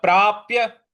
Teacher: प्रा के बाद जो आधा प है उस पर हमको आघात देना है बल लगाना है तो ये हो रहेगा प्राप्य पुण्य पुण्य जो पु के पु के बाद जो प जैसा साइन है उस पर हमको आघात देना है।